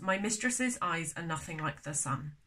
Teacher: my i do not think is emphasized but miss is